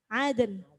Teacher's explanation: Karena itu qalqalah, kemudian nunnya mati dijadikan mati karena waqaf, jadi bunyinya aden.